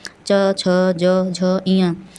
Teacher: हमारी वायु का प्रेशर गले से थोड़ा ऊपर तालु पर पड़ता है। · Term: तालव्य व्यंजन